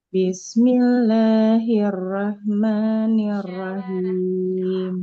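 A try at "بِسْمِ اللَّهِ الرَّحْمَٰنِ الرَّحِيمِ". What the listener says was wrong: Boleh diulang Ibu di huruf foronya ya. Jadi jangan terlalu bergetar. Bismillahirrahmanirrahim.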